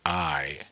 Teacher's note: I sounds like I would be a combination of ah and e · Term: sliders